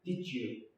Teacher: Bir arada d sesi c sesini verir